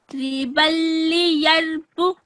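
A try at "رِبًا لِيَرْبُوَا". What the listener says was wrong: But you haven't pronounced the wow. It's only the alif that is alif zaida. It's only the alif with a cross that's got to be ignored. This one. But the wow, that won't be ignored. That that stays where it is basically, and that's the right thing.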